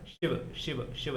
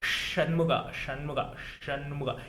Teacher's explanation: आपको दात जोड़ने की जरूरत नहीं पड़ती तो वो एक तो शिव वाला सिंपल वाला श है शिव शिव शिव जहां प दात टच करते दूसरा है शुगा शुगा शुगा यहां प दांत को टच करने का जरूरत नहीं होता है